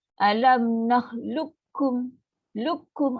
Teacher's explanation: Bunyi qaf dah tak ada. Bunyi qalqalah apa tu tak ada. Kita terus pada bunyi huruf kaf. Dia lebih nipis.